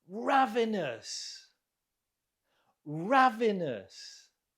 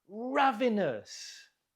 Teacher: Note the stress on the first syllable.